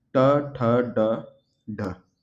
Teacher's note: मूर्धा ट वर्ग, जीभ के ऊपर हिस्से से आवाज आएगी, ट ठ ड ढ। ठीक है, जीभ भी लगेगी वहां जा करके।